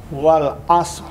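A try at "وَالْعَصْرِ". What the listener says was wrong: Jangan asor. Wal 'asr.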